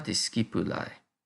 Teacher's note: AE es un diptongo que suena a AI, o las letras AI.